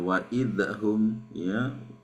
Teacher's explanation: Jangan sampai huruf zal itu dipantulkan.